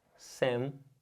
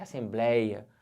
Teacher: Pelo mesmo motivo de heróico, porque a gente está falando de uma palavra que é paroxítona. A sílaba forte é a penúltima.